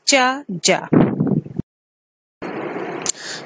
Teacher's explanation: produced by involving more than one of those manners of articulation firstly produce the sounds in the alveolar ridge then followed by or combined with fricative sounds